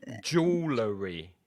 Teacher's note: I reckon that's three syllables and the first syllable will be stressed